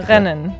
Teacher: You hear it in the back of your throat a little bit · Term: back throat R